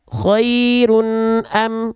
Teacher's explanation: dengan huruf-huruf Hamzah ha kecil k Ain Gin atau ha ya tanpa ditahan tanpa disertai dengan dengung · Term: izhar halqi